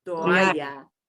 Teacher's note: we have to pronounce both the o and the a